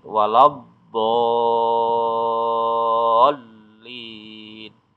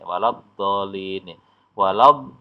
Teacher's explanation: Jadi do-nya ini wajib dibaca panjang dulu 6 harakat, ya, baru kemudian masuk di huruf lam bertasdid. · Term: mat lazim musaqqal kilmi